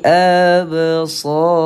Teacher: lantunan kecil pada huruf ba. Seakan-akan kita tambahkan padanya huruf i kerana sebutannya nipis sahaja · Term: qalqalah